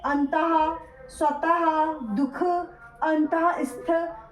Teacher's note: विसर्ग भी स्वर के बाद आता है और ये व्यंजन है और उच्चारण हा की तरह होता है